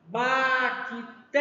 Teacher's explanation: a sílaba mais forte é a sílaba té. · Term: sílaba forte